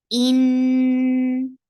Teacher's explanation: For kasra, give E sound and attach with noon. Noon will get gunna, and this gunna will be akmal, so it will take 2 counts long time.